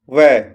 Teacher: ऊपर के दांत और नीचे के होंठ के मेल से बनने वाली ध्वनि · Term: दंतोष्ठ